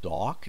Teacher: dock with a longer vowel sound so we have dock not duck